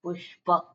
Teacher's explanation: પુ ઉપર જાણે કે ભાર આપતા હોય એવી રીતેને તોડી નાખીએ અને પછી પ ઓકે એટલે મિત્ર આપણે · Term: ગુરુ